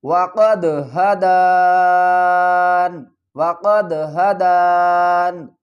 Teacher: وقف کی صورت میں ہم کیا کریں گے، یہ جو نون کے نیچے زیر ہے اس کو ڈراپ کر دیں گے، نون کو ساکن